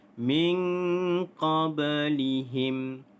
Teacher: Di sini adanya hukum nun mati bertemu dengan huruf qaf. Nun mati bertemu huruf qaf, maka hukumnya adalah ikhfa hakiki. Cara bacaannya adalah kita dengungkan dengan kadar 2 harakat.